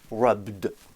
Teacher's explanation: les verbes réguliers qui se terminent par le son B, par exemple, comme rub, auront leur forme ED qui se prononcera D, parce que B, ça vibre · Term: D qui vibre